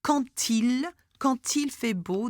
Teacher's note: the D at the end is pronounced such as T. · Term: liaison